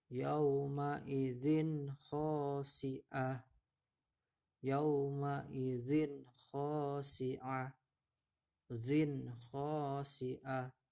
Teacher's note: Jadi zinnya itu jelas ya, tidak didengungkan atau disamarkan ya. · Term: idhar halki